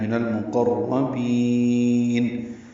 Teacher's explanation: من المقربین میں لام پڑھا جا رہا ہے، اظہار قمری ہے، قاف را دونوں پر ہیں، اور بین میں با کو لمبا کرنا ہے.